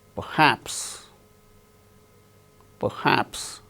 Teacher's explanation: R is not uttered because it is followed by h in the word perhaps.